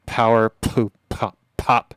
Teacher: when those P's happen, it sends a pocket of air, which then hits the diaphragm of the mic and creates this an overabundance of low end for that short period of time, and you get this sort of little bit of an explosion effect, and that's why they call it a plosive.